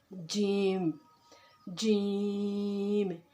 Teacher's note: جیم کی مقدار 3 الف کے برابر ہے۔ جیم کا مخرج ہے وسط زبان اور وسط تالو، یعنی کہ زبان کا درمیانی حصہ اور تالو کا درمیانی حصہ۔